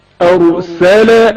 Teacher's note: رائے ساکن سے پہلے زبر ہے جس کی وجہ سے را کو تفخیم کے ساتھ پڑھا گیا ہے